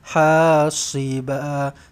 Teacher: Kena jaga baik-baik dekat huruf sad ni, sebab kalau kita nipis sangat nanti dia jadi huruf sin.